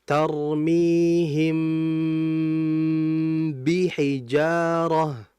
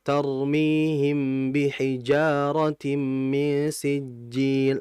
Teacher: kita harus menyempurnakan ghunah pada mim di ikhfa syafawi tersebut